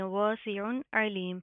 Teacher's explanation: तो यहाँ पर हम इजहार करेंगे, यहाँ पर हमने सिंपल नून की आवाज़ को ज़ाहिर करना है, हम कोई इख्फा कोई गुन्ना नहीं करने करेंगे